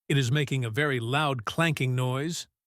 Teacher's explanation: Try to emphasize the word loud